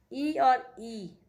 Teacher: ई और ई तालु से बोले जाते हैं